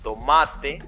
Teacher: tomate se nota la fuerza en ma